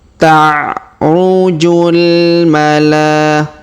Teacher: huruf la kita panjangkan 5 harokat karena di atasnya terdapat tanda garis bacaan panjang 5 harokat.